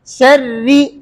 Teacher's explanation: रा मुशद्दद के नीचे जेर होगा शुरू से आखिर तक बारीक है